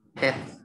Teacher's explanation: Cái âm v. Cái âm v là cắn răng vào cái môi dưới. Sau đấy thổi hơi ra, rung cái cổ.